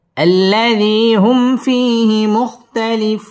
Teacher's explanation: আল্লাযী হুম মিম সাকিনে ইজহারে খাস গুন্না ছাড়া পড়তে হবে। হুম ফি জেরের বাম পাশে জজম ওয়ালা ইয়া মদের হরফ, 1 আলিফ টেনে পড়তে হবে। ফিহি মুখতালিফুন মধ্যে আরজি, এখানে 3 আলিফ টান দিয়ে ওয়াকফ করতে হবে। · আল্লাহ লাম তাসদীদ ওয়ালা হরফ, আল্লাযী জেরের বাম পাশে জজম ওয়ালা ইয়া মদের হরফ, 1 আলিফ টান দিয়ে পড়তে হবে। আল্লাযী হুম মিম সাকিনে ইজহারে খাস গুন্না ছাড়া পড়তে হবে। হুম ফি জেরের বাম পাশে জজম ওয়ালা ইয়া মদের হরফ, 1 আলিফ টেনে পড়তে হবে।